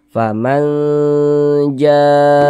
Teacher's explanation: Mad wajib muttasil itu wajib dibaca panjangnya itu minimalnya empat harakat. Dia panjangnya boleh empat harakat, boleh juga lima harakat.